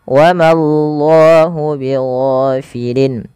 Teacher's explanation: Jangan wamallah, tapi wamallah. Ma tipis, Allahnya tebal.